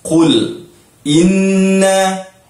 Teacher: Qul inna ni wajibul ghunnah. Inna kena dengung.